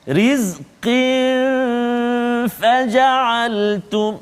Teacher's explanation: tanwin bertemu dengan fa, rizqin faja'altum, dua harakat juga, dengung kat situ